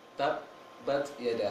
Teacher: Seharusnya ba tersebut hanya di bibir saja. Ba, dan jangan membaca ba. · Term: dua bibir